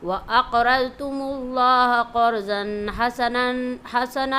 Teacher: اس کے بعد برسولی کی را، عذرتم کی را اور اقرضتم کی قاف، را اور ضاد کو موٹی آواز سے پڑھیں گے، اق پر قلقلہ بھی کریں گے